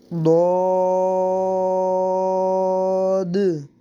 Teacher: اس کو صرف موٹا کرنا اور لمبا کرنا ہے اور آگے دال اس کی ظاہر کرنی ہے